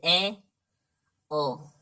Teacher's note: मुख द्वार आधा बंद रहता है, ए, ओ, ठीक है, मुख द्वार आधा बंद रहता है, ये आते हैं आपके अर्ध संवृत में।